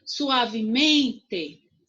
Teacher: O men é mais forte, certo? É a minha sílaba tônica.